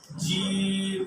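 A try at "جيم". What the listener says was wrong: জি জি জি জি জিম না আরেকটু ভিতরে জিব্বার আরেকটু ভিতরে বলছি জি জি জি জি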